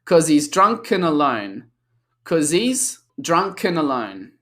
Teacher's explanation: because cause sounds with a Z, a consonant sound, we then link the consonant sound on cause with the pronoun he, because the H drops, so it links again.